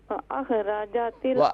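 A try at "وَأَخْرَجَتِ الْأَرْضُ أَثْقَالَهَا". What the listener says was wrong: دیکھیں یہاں پر سکتہ نہ کریں، ہر جگہ پر رکے نہیں. توڑیں گی، بالکل توڑ دیں گی حرف کو، تو کلمات کو توڑ دیں گی تو پھر سمجھ میں نہیں آئے گا. وَأَخْرَجَتِ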